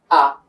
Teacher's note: হামজার মাখরাজ ছিল হলকের শুরু, তো হামজা জবর আ, এইভাবে পড়তে পারি। তো এইভাবে যদি আমি পড়ি আলিফ শব্দটা বা এই হরফটা আমি তাড়াতাড়ি পড়বো।